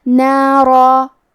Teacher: حکم ہے تفخیم تو ہم حرف الرا کو اور اس کے بعد مد الف کو بھاری آواز میں پڑھیں گے